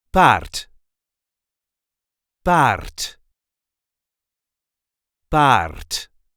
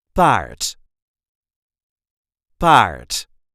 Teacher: Yes, there is an R in it, but you don't really have to roll that R. You can if you want to, and it will sound like this.